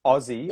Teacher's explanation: because the first syllable is now emphasized, we do say the vowel sound oh, Aussie